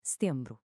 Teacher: O som do N não sai totalmente pela boca, ele ressoa pelo nariz. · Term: vogais nasais